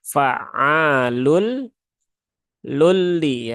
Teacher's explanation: tanwin bertemu dengan lam ya idgham bila ghunah Maka jangan di gunahkan atau jangan ditahan terlalu lama menjadi lulli kebanyakan masih seperti itu ya Kita sudah sering ingatkan